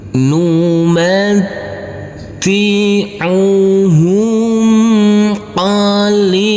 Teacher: Numatti'uhum qalilan. Tanwinnya kita baca dengan samar-samar dan kita dengungkan. Pada waktu berdengung persiapan masuk ke huruf sa. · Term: bacaan ikhfa